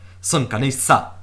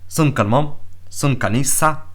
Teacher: So you can hear my secondary stress, like in Swedish